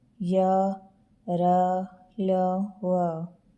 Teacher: जिन वर्णों का उच्चारण करते समय जीभ मुख के किसी भाग को पूरी तरह स्पर्श नहीं करती है, उन्हें अंतस्थ व्यंजन कहते हैं